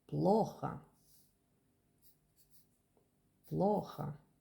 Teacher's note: The second O became A because the accent is on the first.